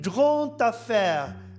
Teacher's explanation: Une grande affaire, le D devient T.